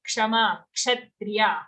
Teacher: it's a ksha sound like in kshama, kshatriya, half ka full sha